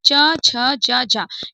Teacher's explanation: लेकिन इन्हें संघर्षी भी कहा गया है क्योंकि इनको उच्चारित करने में इनका उच्चारण करने में थोड़ा सा संघर्ष का सामना करना पड़ता है। यानी थोड़ा सा हमें ताकत लगानी पड़ती है। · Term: स्पर्श संघर्षी व्यंजन